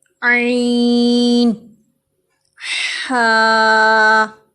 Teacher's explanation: وسط حلق سے، یعنی حلق کے درمیانی حصے سے، یہاں سے عین اور ہا ادا ہوتے ہیں